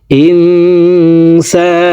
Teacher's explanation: নুন সেকেন্ডের পরে ইকফার 15টি হরফের ভিতরে একটি হরফ সিন আসছে, এই কারণে এই নুন সেকেন্ডকে নাকের ভিতরে লুকাইয়া গুন্নার সহিত পড়ব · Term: ইকফা গুন্না